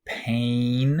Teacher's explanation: pain has an a vowel in it like say up there that makes it a mid front tense unrounded vowel